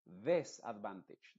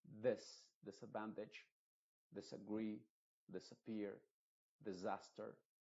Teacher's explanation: tiene que ser una e muy muy oscura que no se note tanto como e pero que se parezca más una i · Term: sonido modificado